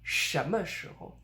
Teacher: The 时 in when is a rising tone, but it only rises a little bit. We don't say 什么时候, but 什么时候.